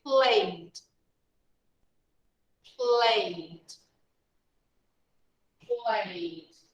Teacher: Play ends in a vowel sound. So we add normally ed, but the pronunciation, we just pronounce the D. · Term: D sound